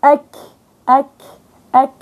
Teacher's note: مخرج الكاف وهو من اقصى اللسان